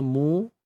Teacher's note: Mim baris depan muncungkan bibir satu harakat je